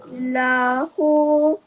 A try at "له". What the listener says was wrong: Cuma minta maaf. Hu tu kena baca panjang sedikit. Lahu.